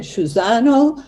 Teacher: they said Cusano with the sh sound, because Sicilians would have the sh